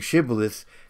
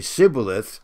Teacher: some languages don't have the sh sound. It comes out as an S.